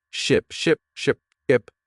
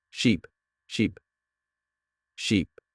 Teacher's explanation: Ship has a short I sound like in sit and sheep has a long e sound like in sea